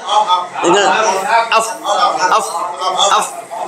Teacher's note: নিচের ঠোঁট, নিচের ঠোঁটের পেট আর উপরের দুই দাঁত আগাটা আইসা লাগছে। তাহলে 14 নম্বর মাখরাজ এটা হলো ফা।